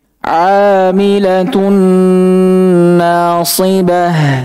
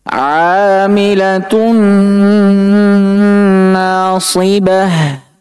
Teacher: Cara bacanya bagaimana? Dibaca dengan dengung dan ditahan 2 harakat. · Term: idgham